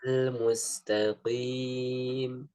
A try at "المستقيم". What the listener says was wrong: Ya, qaf ya. Nanti kalau dalam sifat huruf memang dia huruf istilah. Meskipun dia tidak ibab. Tapi tetap istilah. Jangan jadikan dia istifal. Maka tetap harus ada istilahnya. Maksudnya dinaikkan pangkal lidahnya. Ya ditebalkan lah bahasa mudahnya. Tetap ditebalkan supaya tidak sama dengan kaf, tidak mustaqi.